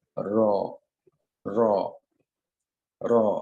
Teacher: জিহ্বার আগার পিঠ উপরের পার্টির দাঁতের গোড়া সংলগ্ন তালুর সঙ্গে লাগবে